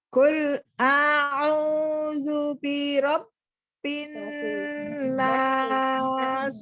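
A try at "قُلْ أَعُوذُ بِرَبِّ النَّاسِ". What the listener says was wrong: Birab. Qul a'udzu birab. Tidak birab. Jangan dipanjangkan dia.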